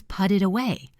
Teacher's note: You will stop looking for the T sound and start recognizing that this soft D sound is actually a T in disguise. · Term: flap T